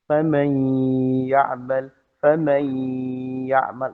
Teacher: suara nun dileburkan kepada ya, lalu kemudian ada gunnah